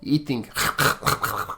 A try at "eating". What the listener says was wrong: Eating. I heard hitting.